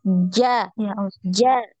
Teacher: Ja, sampai nempel ya, tengah lidahnya itu sampai nempel di langit-langit. Nah, jadi langit-langitnya itu bagian yang dalam itu ya, ya.